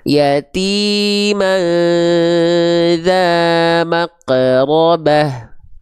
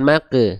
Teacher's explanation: yatim bukan Ma bukan Bukan maq tapi maq bunyi vokalnya bukan ketika keluar vokal tebal itu bukan ke e tapi antara o dan u maq maqrobah ya oke bukan Mak berarti dia kurang tebal yatiman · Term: Huruf tebal